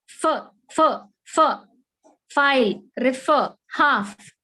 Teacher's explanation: this f should be articulated with your lower lip touching your front teeth, upper teeth. Upper incisors जो है ना, उनको touch होना आपका लोअर लिप जाके. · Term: f sound